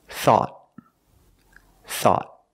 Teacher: At the end, the tongue goes up and makes a stop T.